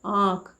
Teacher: सबसे पहले आपको पहला शब्द पढ़ के बता दे रही हूँ, इसको हम बोलेंगे आँख, और इसका उच्चारण करते समय मुख और नाक दोनों का प्रयोग हो रहा है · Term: चंद्र बिंदु